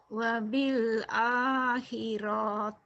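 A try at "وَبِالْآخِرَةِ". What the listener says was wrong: Wabil akhirah. Nggak ada panjang. Wabil akhirah.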